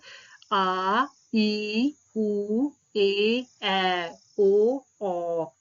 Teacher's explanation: इनके उच्चारण में 2 मात्रा का काल लगता है, यानी इनको बोलने में ह्रस्व से जो है दुगुना समय लगता है। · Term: दीर्घ स्वर